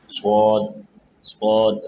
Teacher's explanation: سواد اس کی آواز جو ہے وہ سیم سین کی ہے، یعنی سٹی تھوڑی سی آواز آئے گی